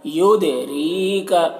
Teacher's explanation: را کو باریک پڑھیں گے اور ری کا تھوڑا کھینچیں گے